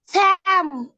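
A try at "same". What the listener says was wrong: স্যাম কেন বাবা? এটা হচ্ছে সেম। ঠিক আছে, এটা হচ্ছে সেম।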